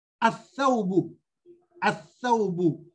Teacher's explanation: And when pronounced with a shadda, the lam vanishes. So from the a, we jump to the letter. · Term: shamsiya